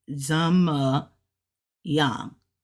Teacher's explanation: You don't even really hear the G when they say it. It's more of the A and the N, the Y-A-N.